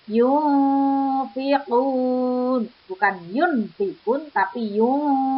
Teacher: Kalau Eva itu berdengung, bacaannya dengung. Di situ ada non sukun bertemu dengan fa, sehingga membacanya mendengung.